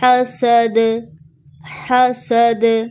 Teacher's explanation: last میں دال ساکن ہوگا اور یہاں پر قلقلہ ہوگا